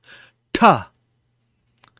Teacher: T you say by putting your tongue at the roof of your mouth and then having a plosive sound come out